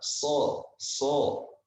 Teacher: huruf yang tebal bacanya harus tebal SH SH Kenapa tebal karena ketika kita mengucapan huruf Shad lidah kita ini terangkat sehingga ketika lidah terangkat ini menyebabkan ee huruf yang kita ucapkan menjadi tebal